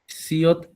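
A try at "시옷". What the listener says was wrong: এটা সিয়ত না কিন্তু, এটা এই আপনারা এটা কিন্তু ভুল করতেছেন, এটা সিয়ত না, এটা শিয়ত। শিয়ত, উচ্চারণ এস এর মতো কিন্তু নাম হচ্ছে শিয়ত।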